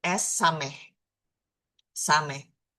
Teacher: Dia berbunyi s. S bukan s yang tebal. Tidak ada hnya. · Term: huruf samh